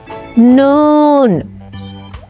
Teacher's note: নয় নম্বর মাখরাজ জিহ্বার আগা তার বরাবর উপরের তালুর সঙ্গে লাগাইয়া